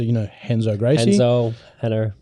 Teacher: The R at the start of a word is actually pronounced as a H.